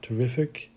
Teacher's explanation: that first syllable of terrific will be an er sound · accentuation on the second syllable for the second word terrific